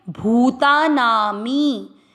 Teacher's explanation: भू की मात्रा दीर्घ करनी है, ता दीर्घ करना है। भूता नामी, मी दीर्घ रखना है, ना भी दीर्घ।